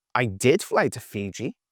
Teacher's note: did is slower. It's louder and the pitch is a little bit higher. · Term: adding stress or emphasis